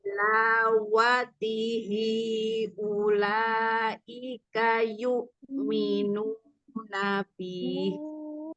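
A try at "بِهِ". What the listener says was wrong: Di sini nanti eh, bihnya langsung pendek aja. Bih. Ya, jangan bih. Bihnya pendek.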